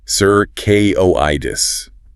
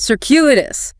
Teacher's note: Stress on the second syllable. The first C is like S, and that Q is like circuitous.